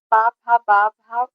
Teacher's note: पा फा बा भा ओष्ठ व्यंजन होते हैं